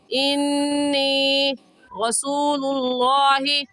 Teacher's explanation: انی میں نون مشدد ہے، اور نون مشدد پر ہمیشہ غنہ ہوتا ہے